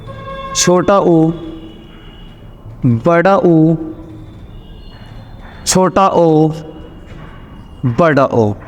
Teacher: जिन वर्णों को बोलने में होठ गोल हो जाएं, उन्हें वृत्ताकार स्वर कहते हैं